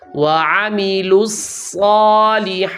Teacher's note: یہاں صاد پر شد بھی کرنی ہے اور اس کی مقدار بھی پوری کرنی ہے